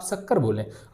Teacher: तो शक्कर बोलने में जो आपकी जीभ है दोस्तों ये तालु वाले स्थल में जा रही है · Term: तालव्य